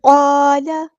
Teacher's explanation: قاف یہاں پہ پورا ادا کریں گے، ہیوی لیٹر ہے